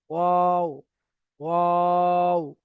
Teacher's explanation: 14 নম্বর মাখরাজে রয়েছে ওয়াও, দুই ঠোঁট অসম্পূর্ণ মিলিয়ে মাঝখান বরাবর থেকে উচ্চারিত হয়